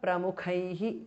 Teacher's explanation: Tha and kha are mahapranaha. Visarga changes to repha.